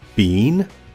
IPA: biːn